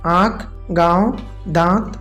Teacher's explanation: यह किसी भी व्यंजन के ऊपर लगता है और इसका उच्चारण नाक और मुंह दोनों से होता है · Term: अनुनासिक